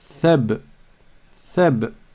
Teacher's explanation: Sortez bien la langue et ne me dites pas seb, seb. Parce que seb, c'est avec une autre lettre. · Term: le tha